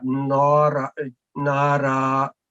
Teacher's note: this ra is with fatatan will change into like one fatah and alif madda